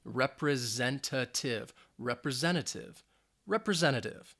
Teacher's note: it has five syllables and the stress is on that third syllable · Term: Z sound